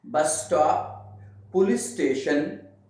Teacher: when that two S sounds are together, so one of them is automatically disappeared